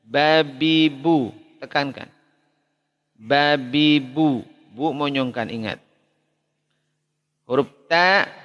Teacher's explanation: Dari ujung lidah bertemu dengan pangkal gigi seri atas sama seperti itu tertekan tapi sekaligus dia ada hams ya hamsnya sangat muncul